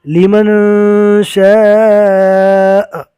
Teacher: آخری حرفوں پر جزم پڑھیں گے اور شاء کو کھینچیں گے اس لیے کہ مد ہے